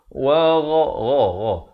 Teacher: Ghain makhrajnya di pangkal kerongkong